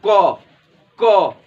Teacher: उच्चारण स्थान मतलब जैसे कि मैं बोलता हूं क, तो क बोल के देखिए, उच्चारण कीजिए, तो क जब बोलिएगा तो ऐसा लगेगा कि कंठ से आवाज निकल रहा है